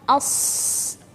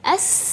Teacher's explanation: sofir huruf shad kurang lebih sama seperti huruf sin, tapi karena dia suara huruf shad agak tebal, jadi pasti suaranya berbeda. Kalau sin s, kalau huruf shad as, ya agak tebal suara huruf shad.